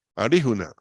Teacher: lo que llaman un flat en inglés es verdad o sea un sonido es como una rl pero con la lengua más hacia atrás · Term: el sonido rl